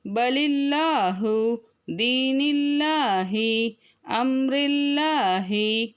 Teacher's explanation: அல்லாஹ் என்ற வார்த்தைக்கு முன்னுள்ள எழுத்து கெஸ்ரா, அதாவது ஜேர் வந்தால் அல்லாஹ் என்ற வார்த்தையை மெல்லினமாக ஓத வேண்டும்.